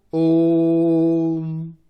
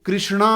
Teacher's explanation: दीर्घ में 2 सेकंड और पलट में तीन सेकंड लगेंगे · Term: पलट स्वर